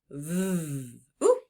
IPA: v